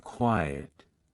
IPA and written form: ˈkwaɪ.ət (Quiet)